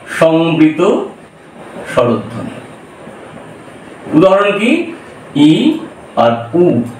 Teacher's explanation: যখন আমি ই আর উ এই দুটো স্বরধ্বনি উচ্চারণ করছিলাম তখন জীব পুরো মুখটাকে ভরে দিয়ে উচ্চারিত হচ্ছিল অর্থাৎ মুখের মধ্যে কোন শূন্যতা বা ফাঁকা স্থান ছিল না সেজন্য এর নাম দেব আমরা সংবৃত স্বরধন সমবৃত স্বরধ্বনি।